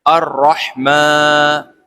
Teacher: یہ نون جو ہے یہاں را کے اندر ملا کر پڑھا جائے گا، کیونکہ را کے اوپر تشدید لگی ہوئی ہے